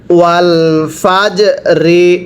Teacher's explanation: জবর ফাজ রাজার রে ওয়াল ফাজ রে আবার ওয়াল ফাজ রে জিমটা কলকলা করতে হবে কারণ কফ ত বা জিম দাল এই পাঁচটি হরফ সাকিন হলে ধাক্কা দিয়ে পড়তে হয়